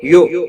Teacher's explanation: حمزہ ساکن کو تھوڑا جھٹکے کے ساتھ ادا کریں گے